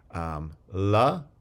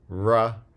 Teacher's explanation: liquids which have freely flowing air through the mouth and these again are always voiced there aren't voiceless liquids in english except in certain environments and · so we have la the lateral and ra the retroflex in english